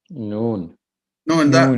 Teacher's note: നാവിന്റെ തലയും മേലെ മുമ്പല്ലിന്റെ ഊനും